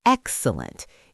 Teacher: if you call something excellent, the stress is on the first syllable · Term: syllable stress